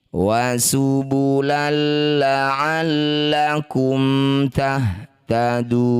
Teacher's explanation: Ini disebut bacaan namanya idgham bila gunnah. Masukkan bunyi fathah tanwin pada lam tanpa dengung.